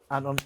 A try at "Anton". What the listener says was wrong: Anton, bruv, not Anton. My name's got a T in it, bruv.